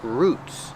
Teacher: make it long ooh ooh like food